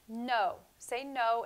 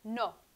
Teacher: the n in spanish you move your tongue a little bit forward to the back of your teeth